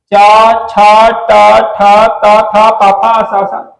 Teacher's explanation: कंपन पैदा नहीं होता व्यंजनों को अघोष व्यंजन कहा जाता है